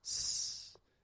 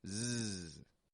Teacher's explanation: s and Z hold the same position it's just Z adds voice whereas s is voiceless it's just air